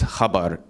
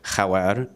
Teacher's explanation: So, for example, news is khabar in Arabic, but a B between two vowels becomes a W. So khawar is news.